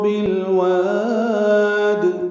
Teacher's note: بالواد میں لام ساکن ہے، اس پہ اظہار ہے، واو کو لمبا کریں گے اور دال ساکن پہ قلقلہ ہوگا